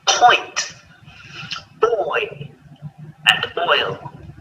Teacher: going from rounded lips to unrounded. Starting on the O and finishing on the I or E, oi.